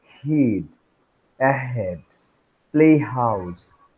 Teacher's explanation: The glottis is narrowed down, and the air passes through that narrowed glottis. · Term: glottal fricatives